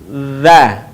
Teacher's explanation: Cara melafalkan huruf dha adalah dengan menyentuhkan ujung lidah kita dengan dinding dua gigi seri bagian atas. Suara mengalir dengan lembut tanpa diiringi dengan mengalirnya udara.